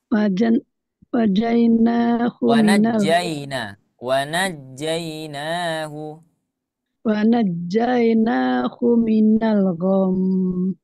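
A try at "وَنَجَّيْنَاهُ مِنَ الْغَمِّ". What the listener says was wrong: Mumtaz, ahsan.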